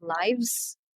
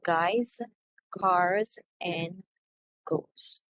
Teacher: so when do we pronounce a word ending in z so we say z when the words ends in a vowel or voice sound like m n l b d v